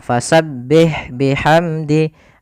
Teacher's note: pada lafal fasabbih sempurnakan kasrahnya, jangan dibaca e. Contoh fasabbih bihamdi, Ini kan tidak menyempurnakan kasrahnya. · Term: menyempurnakan harakat kasrahnya